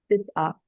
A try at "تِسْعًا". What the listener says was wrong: अन क्यों पढ़ा आपने। आखिर में दो जबर हो तो उसको, अलिफ हो तो फिर उसको हम एक हरकत पढ़ते हैं और लंबा करते हैं।